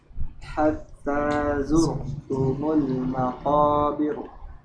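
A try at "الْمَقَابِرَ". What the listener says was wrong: Bir. Nah, jangan bir tebal apa tipis ini? Ayo. Bir ya. Bir. Jangan ditebalkan. Karena apa? Sebelumnya huruf ra-nya yaitu huruf yang berharokat kasrah. Ya, bir. Maqabir. Jangan bir. Nah, itu tebal kalau bir. Zurtumul maqabir.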